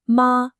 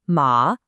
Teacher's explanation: ma with a high flat tone means mother, but ma with a dipping tone means horse.